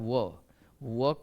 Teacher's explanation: अब 6 में आइए, वकारस्य दंतोष्ठम, यानी कहता है व का उच्चारण, दंतोष्ठम संधि विच्छेद कीजिएगा तो दांत प्लस ओष्ठ, तो व का उच्चारण, व एक ऐसा अक्षर है जिसका उच्चारण दांत और ओष्ठ दोनों से मिलकर होता है, दांत और ओष्ठ दोनों से मिलकर होता है।